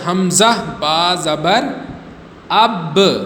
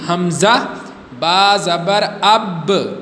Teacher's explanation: double sound نکلے گا، آواز لوٹ کر آئے گی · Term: قلقلہ